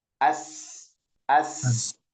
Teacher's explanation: Nafas. Sifat huruf sin ini adalah hames ya. Jadi banyak napasnya keluar dari sana. As as banyak napas ya.